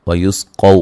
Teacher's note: قاف کو موٹا ادا کریں گے، واو لین ہے، فی یا مدہ ہے، ہا الف مدہ ہے.